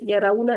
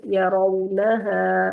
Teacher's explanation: را کے اوپر زبر ہے تو اس کو موٹا کریں گے